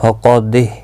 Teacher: قاف مستعلیہ ہے، پر پڑھا جائے گا